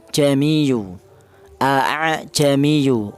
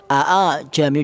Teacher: Ini cara menurut orang Arab ini apabila dua hamzah apabila kumpul dia tuh susah bacanya, maka dibuat tashil, dipermudah. Jadi hamzah yang kedua itu dibaca setengah hamzah juga setengah alif